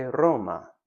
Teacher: In most romance languages, they use an alvolar R, which is basically the rolled R as we call it in English.